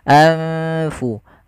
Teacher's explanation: Adanya nun sukun bertemu dengan huruf fa, yang dimana nunnya disamarkan ke huruf fa. Nunnya disamarkan ke huruf fa, jangan diganti. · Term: ikhfa